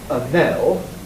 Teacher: The N is stronger in a Nell because it's at the beginning of a syllable, stressed syllable.